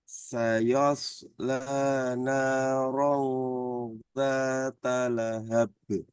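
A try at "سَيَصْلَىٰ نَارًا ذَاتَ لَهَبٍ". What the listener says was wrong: nah ini iya-nya jangan ikut tebal, tetap tipis. Saya, bukan sayo. Sayos, sayos. Nah, itu kan sayo. Saya, shotnya yang tebal. Sayos, sayos lah.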